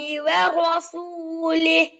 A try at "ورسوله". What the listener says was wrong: பெரிய ஹா வரசூலிஹ். பெரிய ஹால நிப்பாட்டணும். அதை உச்சரிப்பிட தெளிவு போதாது பெரிய ஹாட.